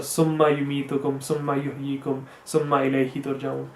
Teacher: So instead of summa yumitukum, it's summa yumitukum, which is incorrect because there is nothing in between the ma and the yu, so you don't have to put something there or have a complete or sudden stop